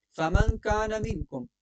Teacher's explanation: نون ساکن کے بعد کاف ہے، تو جب نون ساکن کے بعد کاف آ جائے تو پھر اخفا ہے